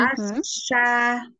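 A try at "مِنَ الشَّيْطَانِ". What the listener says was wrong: Enggak asa, asya. Asyaitoni yu'a'udhu.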